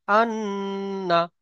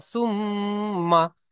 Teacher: উচ্চারণটা নাকে একটু ধরে রাখতে হবে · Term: গুন্না